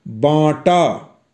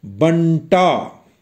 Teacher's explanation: जब हम बांटा लिखते हैं तब ब और टा के बीच में कोई अन्य ध्वनि ना होकर नासिकीय ध्वनि बा के साथ ही मिली हुई है। ध्यान दीजिए मैं कैसे पढ़ रहा हूं, बांटा।